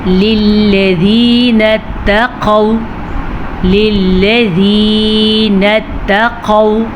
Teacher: قاف کو پر پڑھیں اور واو لین پڑھیں